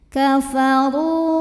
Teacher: Ru mad tabi'i zahiri karena ada waw sukun didahului baris dhammah. Maka dibaca ra-nya panjang cukup 2 harokat saja.